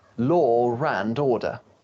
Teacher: sound like law and the next word begins in an uh you'll often hear a r sound linking them together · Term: intrusion